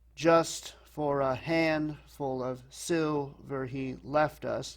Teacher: Just for a ribbon to stick in his coat. So you can work out and see that there's these patterns of stressed and then 2 unstressed syllables. So the final form is dactylic.